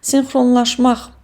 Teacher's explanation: Laş və mak şəkilçiləri hər ikisi vurğu qəbul edə bildiyi üçün vurğu sonuncu hecaya ötürülüb.